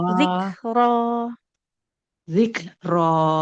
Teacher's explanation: huruf kaf dia harus ada aliran nafasnya